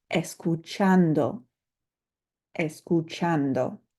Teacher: You'll notice that I underlined chan because that's the syllable that we're going to emphasize when we pronounce this word.